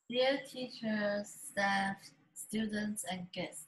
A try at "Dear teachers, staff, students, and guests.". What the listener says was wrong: Not strong enough. That opening is weak. It's very weak. You're calling people to come listen. Okay? So your voice needs to be